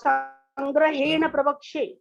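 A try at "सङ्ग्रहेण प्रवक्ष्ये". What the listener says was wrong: না, সংগ্রহেণ আর একটা প আসবে, তার কারণ প্র হচ্ছে যুক্ত বর্ণ, ঠিক আছে? যুক্ত, হ্যাঁ শোনো আগে শোনো, প্রবক্ষ্যে প্র হচ্ছে যুক্ত বর্ণ। এই যুক্ত বর্ণের আগে, যুক্তাক্ষরের আগে যদি ছোট ভাওয়েল থাকে, শর্ট ভাওয়েল থাকে, তাহলে এই যুক্ত বর্ণের প্রথম লেটারটা দুবার উচ্চারিত হবে।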